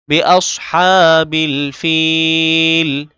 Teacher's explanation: হা এক আলিফ টানতে হবে এবং হা গলার মাঝে ঢুকাতে হবে